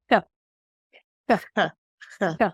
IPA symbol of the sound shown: x